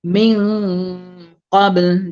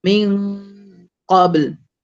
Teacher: Dia dengung tu dengung di huruf qaf. Kenapa dia dengung di huruf qaf? Sebab huruf qaf tu dia di pangkal lidah. Jadi dia jauh daripada mulut.